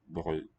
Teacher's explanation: we don't really hear that D clearly either, but the D seems to be coloring the vowel. Brød. Closure very incomplete in the mouth.